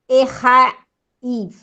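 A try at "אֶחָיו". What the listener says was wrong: Esse Yud é lido ou não? Não. Olha a regra fonética. Quando a palavra termina em A, Yud e Vav, o Yud não é lido. Errav.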